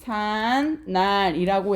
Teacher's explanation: 그러면 한자어와 우리말로 된 합성어면서 앞말이 모음으로 끝나고 있으면서 뒷말의 첫 소리 지금 니은으로 시작하고 있으면서 발음을 했더니 제삿날이라고 해서 여러분 없었던 니은 소리가 새로 생기고 덧나고 있다